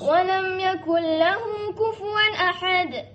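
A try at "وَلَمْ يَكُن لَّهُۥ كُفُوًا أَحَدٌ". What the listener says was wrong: Laju okey, cuba. slowkan sikit tempo.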